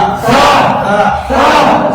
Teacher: একটু জিহ্বা বের করবেন, হালকা পাতলা হবে